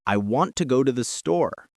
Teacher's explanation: The words want, go, and store are strong and clear, but I, to, and the are incredibly fast and quiet. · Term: stressed